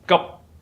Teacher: In order to pronounce it correctly, you must close your mouth. The mouth in the position of pronouncing P, but you do not let air coming out of your mouth. That is called unaspirated P.